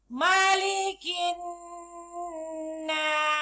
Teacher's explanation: Hukumnya wajibul gunnah. Cara bacaannya dengung. Kadar bacaan dengungnya ialah 2 harakat.